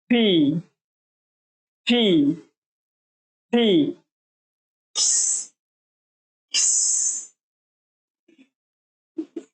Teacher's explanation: এভাবে এফ যে বর্ণটি রয়েছে, সাউন্ড হবে উপরের দাঁত নিচের ঠোঁটে লাগিয়ে ফি ফি ফি, এভাবে আমরা উচ্চারণ করব।